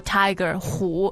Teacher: it's normally the third tone for Tiger who but here uh you pronounce you pronounce it as the first